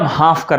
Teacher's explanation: हाफ कर बैठ गया हाफ हाफ कर नहीं हाफ कर हाफ तो फ के जगह पर प का उच्चारण हम लोग कर देते हैं